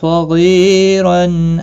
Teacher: स्वाद मुस्तालिया है पुर पड़ा जाएगा, गैन भी मुस्तालिया है पुर पड़ा जाएगा। सगी या मद्दा है, एक अलिफ के बराबर खींच कर पढ़ेंगे। · सगी या मद्दा है, एक अलिफ के बराबर खींच कर पढ़ेंगे। तनवीन के बाद हल्की हमजा है, इजहार हल्की होगा, गुन्ना नहीं होगा। औ वाउलीन है, थोड़ा नरमी के साथ खींच कर पढ़ेंगे।